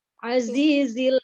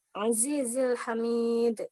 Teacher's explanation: Karena zai ini bersifat sofir. Jadi desisnya harus kenceng ya.